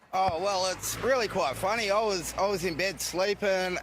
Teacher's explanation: because he's got a broader accent it's going to sound a lot more nasally · it's higher up in the nose when he's speaking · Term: broader Australian accent